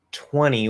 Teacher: Then we have 20, which is a little special because of the N. We tend to drop the T